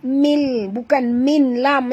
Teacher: Okey, tanwin berjumpa dengan lam. Kita kena masukkan tanwin ini bunyinya ke dalam lam tapi tanpa dengung. Tak boleh dengung ya. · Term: idgham bila gunnah